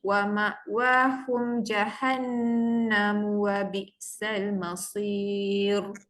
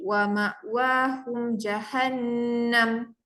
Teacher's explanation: Jadi bila sambung jahannamu, mu tu dibaca. Kalau saya berhenti, wa ma'wahum jahannam, bunyi dia berubah.